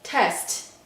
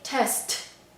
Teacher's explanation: we have to make the aspirated T sound like when the T is at the beginning of a word